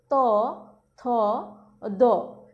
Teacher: দন্তধ্বনি হচ্ছে জিহ্বার ডগা হতে উপরের দাঁত স্পর্শ করে যে ধ্বনি উচ্চারিত হয়